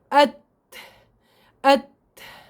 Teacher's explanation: انحباس تام لصوت الحرف وجريان تام للنفس، جريان كثير لهواء النفس. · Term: حرف التاء